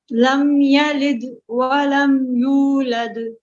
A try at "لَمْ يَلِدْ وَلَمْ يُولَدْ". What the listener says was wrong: یہ لم یلد اس کو قلقلہ اور ہلا کر پڑھنا ہے. لم یلد ولم یولد ایسے نہیں. لم یلد ولم یولد.